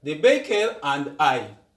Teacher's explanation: the r is pronounced because the next word that comes start with a which is a vowel